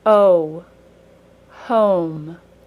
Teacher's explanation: long o is the middle sound of the word home um the long o ends in a brief W sound